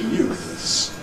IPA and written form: juːθs (youths)